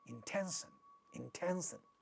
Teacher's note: a voiceless stop is at the initial position of the syllable therefore it is getting aspirated